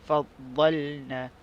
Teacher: na adalah mad asli, dibaca secara 2 harakat, sepanjang 2 harakat.